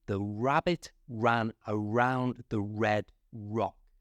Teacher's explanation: Notice my lips go forward for all them R's.